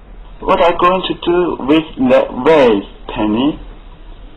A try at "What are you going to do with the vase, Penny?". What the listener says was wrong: 然 后 就 是 长 最 后 一 个 单 词 的 长 元 这 个 元 音 啊 ， 要 拉 长 一 些 。